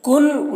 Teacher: نون میں اخفا ہوگا، یہاں پر نون ساکن کے بعد فا ہے حروف اخفا میں سے، تو یہاں پر اخفا کریں گے۔